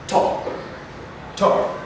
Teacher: your tongue stops the flow of air at the front of your mouth it is a voiceless sound